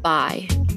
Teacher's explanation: For people outside the South, this vowel has two parts. You can probably feel your tongue shifting as you say the word bye. But in Southern speech, I is a one-part vowel in many cases, sounding more like ah than I.